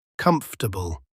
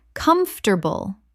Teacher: It's like the O and the A just disappear into thin air.